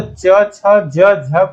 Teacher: तो च, छ, ज, झ को हम लोग क्या कहते हैं? स्पर्श संघर्षी ध्वनियां कहते हैं।